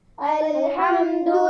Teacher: الحمد، حا کے مخرج کا خیال رکھنا ہے. حا کہاں سے ادا ہوتا ہے؟ گلے کے درمیان سے یا حلق کے درمیان سے اس کی آواز ادا ہوتی ہے